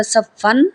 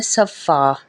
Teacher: جب ہم یہاں پہ وقف کریں گے تو یہ دو زبر کو ہم پھر ایک زبر پڑھیں گے، ٹھیک ہے. یہاں پہ بن رہا تھا صفن، یہاں پہ جب ہم نے وقف کرنا ہے تو ہم نے پڑھنا ہے صفا.